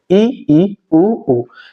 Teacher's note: संवृत स्वर की बात करें तो दोस्तों संवृत स्वर वे स्वर हैं जिनके उच्चारण में मुख वृत्त के समान बंद सा रहता है, अर्थात सबसे कम खुलता है। वो संवृत स्वर कहलाते हैं, जैसे ई, ई, उ।